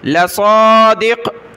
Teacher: صاد کو کھینچنا، لام کو نہیں کھینچنا، لصادق جب رکے تو لصادق۔